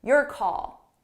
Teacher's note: So notice how call is a little bit louder and longer.